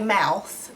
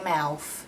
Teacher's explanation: if you say mouth they'd say mouth with an f